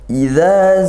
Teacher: di situ ada fathah diikuti Alif Nah di situ dibaca panjang satu ayunan nah hukumnya Mad thi'i kemudian zulzilatil zulzilatil ardu zulzilatil ardu di